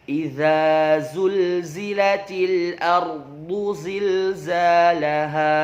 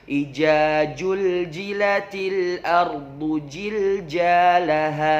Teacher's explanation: Dan juga sering terjadi mengubah huruf zai menjadi huruf jim. Sebagai contoh, yang benarnya adalah idza zulzilatil ardu zilzalaha.